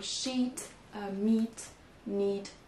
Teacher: Donc, un I plus long que ce qui existe en français. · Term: I long